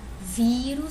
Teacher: Se eu pronunciar vírus, eu sei que o vi é mais forte, né? Se eu for fazer a contagem aqui, última, penúltima, então ela é uma paroxítona.